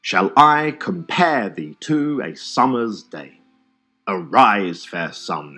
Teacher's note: Notice how the iambs cut across both punctuation and word separation. · each line of verse is made up of five two-syllable iambs for a total of 10 syllables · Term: iambic pentameter